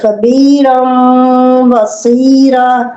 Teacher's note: اب یہ نون تنوین کی مثال جو ہے، نون تنوین فتحتین کسرتین ضمتین نون تنوین ہے، تو یہ فتحتین ہے، اس کے بعد با ہے، تو اس فتحتین کو کے ساتھ میم ملائیں گے، اس کو نون تنوین کو میم میں بدل دیں گے غنے کے ساتھ، ایسے خبیرم بصیرا، ایسے خبیرم بصیرا۔